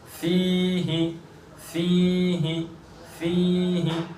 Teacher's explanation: صرف فا کو کھینچا، ہا کو نہیں کھینچا۔